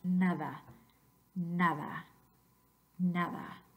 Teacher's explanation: cuando tenemos el fonema d entre dos vocales, ahora no es oclusivo, se convierte en un fricativo en vez de un oclusivo.